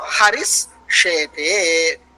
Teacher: So here, considering the shakara as khar pratyahara letter, the khar pratyahara letter is following the padanta visarga. The visarga will be replaced by sakaraha.